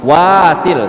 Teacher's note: Perhatikan juga di wanya yang kedua itu panjangnya cuma 2 harokat, tidak boleh lebih. Matobi'i alif namanya ya.